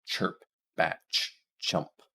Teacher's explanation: So these two are combinations of other sounds. So the voiceless ch is a combination of t and sh, and if you pronounce those both simultaneously, you get ch, you get that ch sound.